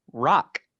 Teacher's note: its coda c k r o c k in english but the sounds are just r a k that's a closed syllable with three sounds